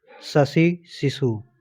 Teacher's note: श तालव्य ध्वनि होती है। जीभ तालु ऊपरी मुंह से स्पर्श